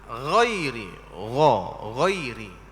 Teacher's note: Dan tebalkan ghain pada ghairi, iaitu baris fathahnya. Jangan campur dhammah. Jangan jadi ghairi.